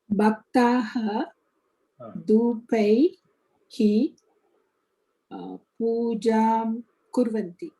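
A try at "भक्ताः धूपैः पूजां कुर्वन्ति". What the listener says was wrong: Uttamam.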